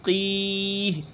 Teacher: قاف کو موٹا کریں گے لیکن زیادہ نہیں